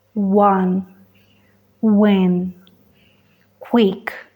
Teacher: la parte posterior de la lengua se eleva hacia el paladar blando Pero esta vez no bloquea El paso del aire hay un espacio entre ellos